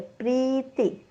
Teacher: प्री दीर्घ आहे, ती ऱ्हस्व आहे.